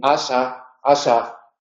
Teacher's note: cuando aparece en Asa Asa pues las cuerdas vocales mantienen la vibración